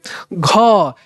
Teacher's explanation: उच्चारण में अधिक वायु निकलता है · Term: महाप्राण